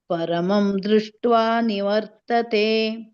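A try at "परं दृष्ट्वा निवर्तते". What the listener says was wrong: ಪರಂ ದೃಷ್ವ ಅಲ್ಲಿ ಪರಮ ಅಲ್ಲ ಪರಂ ದೃಷ್ವನಿವರ್ತತೆ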